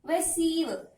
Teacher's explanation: We have to stress on syllable number 2 as it is a verb.